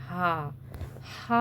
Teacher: जैसे हम बोल रहे हैं तो जीभ कहीं टच नहीं कर रही। सीधा अपने कंठ के सबसे निचले वाले हिस्से से हवा निकल रही है। वायु निकल रही है। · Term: काकल्य